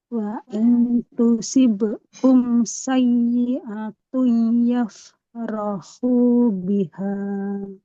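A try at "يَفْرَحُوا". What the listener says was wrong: Yafrohu. Nah, ada huruf H. Ada huruf H. Nggak boleh sama ya. Yafrohu. Yafrohu. Ini di tengah tenggorokan. Yafrohu biha. Yang H-nya baru dipangkal.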